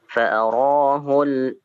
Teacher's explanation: di lam sukunnya jangan sampai dikolkolahkan